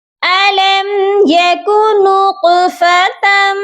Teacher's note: سب سے پہلے طا کو ہم قلقلہ کر کے پڑھیں گے۔